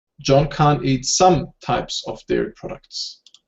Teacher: so here some is stressed